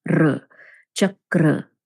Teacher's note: So you know how the word chak in English? So chak and then the retroflex R sound